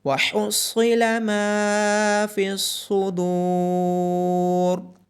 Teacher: صاد، یہ والا صاد اور اس را کو موٹی آواز کے ساتھ پڑھا جائے گا۔ میم کے بعد الف مدہ اور دال کے بعد واو مدہ ہونے کی وجہ سے ان کو لمبا کیا جائے گا۔